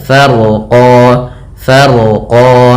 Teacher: Kemudian rnya dibaca dengan tebal karena huruf ro yang dia sukun sebelumnya fathah